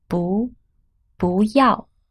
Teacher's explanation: Here 要 is the fourth tone, so 不 is pronounced as the second tone.